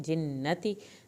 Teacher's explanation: ता की ज़ेर को हरगिज़ लंबा नहीं करना